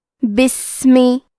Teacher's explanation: بسمی میں الف ہے لیکن یہ حمزہ وصل ہے تو ہم حمزہ کو ظاہر نہیں کریں گے. با کو زیر سے پڑھ کے سین کو پڑھیں گے.